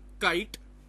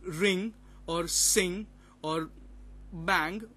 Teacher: the active articulator is the back of the tongue and the passive articulator is a soft pallette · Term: velar sounds